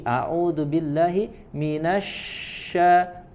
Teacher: huruf Shin itu adalah dari wasyatul lisan ya dari tengah lidah kemudian ditempelkan atau didekatkan ke Al hanaqul Ala ya langit-langit